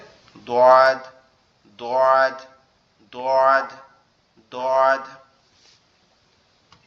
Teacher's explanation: দোয়াদ অক্ষরটা আমাদের জিহ্বার গোড়া উপরের মাড়ির দাঁতের সঙ্গে লাগবে, লেগে উচ্চারিত হবে দোয়াদ, দোয়াদ, দোয়াদ, দোয়াদ।